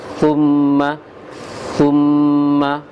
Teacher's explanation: Ini bukan bahasa Indonesia, jadi harus dikeluarkan lidah sedikit di ujung gigi seri atas.